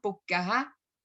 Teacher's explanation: en la costa se comen la S final